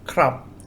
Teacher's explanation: beginning of a word it makes a a b sound but if it's a final consonant it makes a p sound